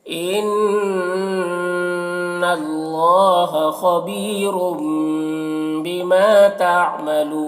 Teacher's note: तनवीन को मीम से बदल कर गुन्ना और इख्फा के साथ में पढ़ेंगे। इसको इक़लाब कहते हैं।